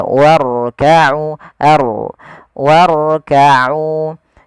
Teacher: Cukup sekali getarnya. · jangan sampai huruf ra itu takrirnya berulang kali